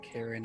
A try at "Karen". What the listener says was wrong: You gotta put the accent on the other syllable. Like if her name was Karen, but she was from Texas. Karen. Just Karen.